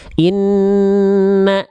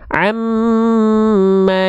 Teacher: Nah, huruf yang bertasydid itu kita baca dengan cara ditekan basicnya, kecuali ya pada huruf nun dan mim. Kalau huruf nun dan mim itu dia dibaca dengan ditahan, karena ada hukum gunnah. Kalau nun dan mim bertasydid, contohnya inna ditahan 2 harokat dia.